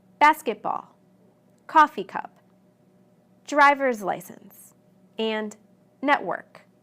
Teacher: Where did I put the stress? Yes, on the first word of each compound noun.